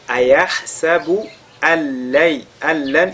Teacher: nun sakin suivi de la lettre lam. On fusionne donc ce nun dans la lettre lam. On fait idgham bila ghunna.